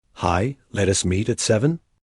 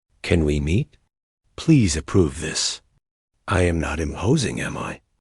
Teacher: The intonation crawls up at the end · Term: up speak